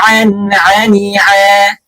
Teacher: Intinya sempurnanya huruf ain itu tidak sampai masuk ke dalam hidung ya